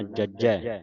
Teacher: ਇਹਨੂੰ ਅਧਕ ਲਾ ਕੇ ਉਚਾਰਨ ਕਰਨਾ ਭਾਵ ਕਸ ਕੇ ਬੋਲਣਾ